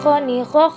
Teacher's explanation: dikeluarkan dari tenggorokan yang terdekat dari rongga mulut ciri khasnya terdengar seperti suara orang yang sedang mendengkur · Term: huruf kha